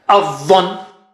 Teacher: Okay, don't say Adhan. A is low and Dha is very thick and high.